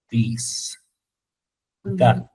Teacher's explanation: la segunda variante de la TH es vibratoria, o sea, sonora, y es vid, vid, this, that, bien, mat, ¿sí?